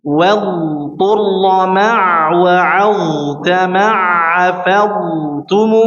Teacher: Wadur harus dialirin ya, harus dipanjangkan suaranya.